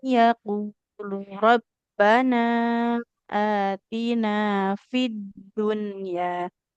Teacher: Di sini ada nun bertasid harus ditahan dulu.